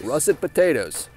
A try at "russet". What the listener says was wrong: Not russert, russet.